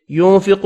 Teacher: کالذی ينفق, یا مدہ ہے, ذی ایک الف کی مقدار میں کھینچ کر پڑھیں گے. ينفق, نون کا اخفا ہوگا, قاف پر پڑھیں گے